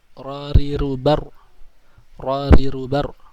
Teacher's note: Ra condong ke dalam serta sedikit ke arah lam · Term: al-inhiraf